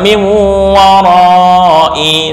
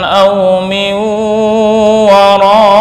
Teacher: ketika wakaf dibaca sukun untuk hamzah, bukan warai, salah, harus wara.